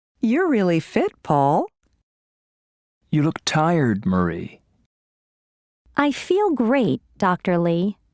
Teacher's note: There is usually falling intonation and a pause before the name.